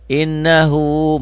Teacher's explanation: Nun dan mim bertasdid. Ini nun bertasdid bersidah. Cara bacanya 3. 1 dibaca double, dengung ke hidung dan ada madnya, ada panjangnya. 1 alif sampai 1 alif setengah. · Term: gunnah